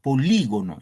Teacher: en la i aquí recae el acento